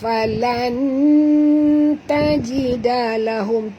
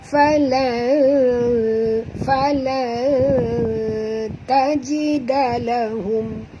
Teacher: Kita kena sorok, tuan-tuan, sembunyikan bunyi nun ini pada kadar separuh dalam ta. Jadi lidah kita berada di tengah-tengah rongga mulut. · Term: ikhfa hakiki